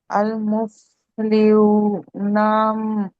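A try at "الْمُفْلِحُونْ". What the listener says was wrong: నా కాదు, నూన్ ఆపుతున్నప్పుడు break వేస్తున్నారు అంటే దానికి నకారం ఇవ్వాలి. అల్ ముఫ్లిహూన్.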